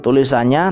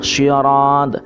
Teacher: Nah ini disebut bacaan qalqalah kubro. Jadi huruf qalqalahnya terbaca qalqalahnya karena dia tepat di pemberhentian atau di bagian waqaf.